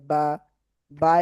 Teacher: দুই ঠোঁটের ভিজা জায়গা হতে উচ্চারিত হয় বা, বা এ উচ্চারণ হয়।